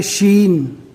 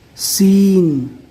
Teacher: شین کی آواز تھوڑی بھری ہوئی لگتی ہے اور سین میں سیٹی جیسی باریک آواز آتی ہے